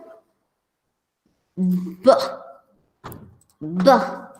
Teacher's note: we close both the lips tightly and then open them to let the flow of air Escape into the atmosphere